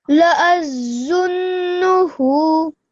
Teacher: this is a thick and heavy sound. So round your mouth as you say this zo. Okay, and the timing on here at the end is for 2 seconds.